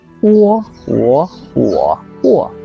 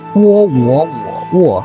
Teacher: going flat, going up, curved, going down